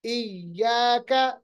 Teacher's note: ای یا پہ چونکہ تشدید ہے 2 بار ادا کرنا ہے، اور یا کا مخرج یاد رکھیے گا، درمیانی حصہ زبان کا اوپر کی طرف اٹھاتے ہیں.